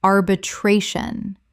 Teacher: Five syllables with the stress on the third.